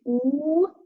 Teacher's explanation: which is a closed monophone, back vowel, with rounded lips and, again, visible by the dots.